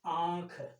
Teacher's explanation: इसका उच्चारण नाक और मुंह दोनों के प्रयोग बल से होता है। नाक में भी जोर पड़ेगा और मुंह में भी इसका जोर पड़ेगा।